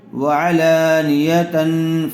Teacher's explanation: نی، وعلانی یا زبر یا، وعلانیہ تا دو زبر تن، وعلانیتن تنوین کے بعد حروف اخفا میں سے فا آیا ہوا ہے، اس لیے غنّے کے ساتھ اخفا کر کے پڑھیں گے